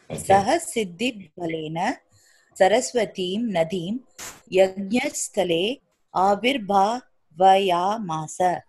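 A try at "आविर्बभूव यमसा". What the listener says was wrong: Avirbhava yamasa is one word. So you cannot split in between the word. Avirbhava yamasa.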